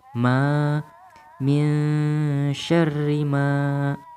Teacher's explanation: Ma di sini dibaca panjang 2 harokat karena ada alif sukun, sebelumnya terdapat fathah. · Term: matobi'i